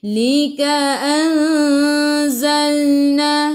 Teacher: ikhfa hakiki dengan dua harakat bawa ke sisi huruf zai